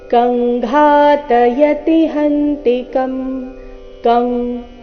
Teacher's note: ಅನುಸ್ವಾರದ ಉಚ್ಚಾರಣೆ ಕ ವರ್ಗದ ಅನುನಾಸಿಕ